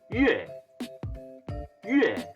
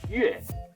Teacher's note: It is pronounced 月, 月 on the fourth tone, so it's going down.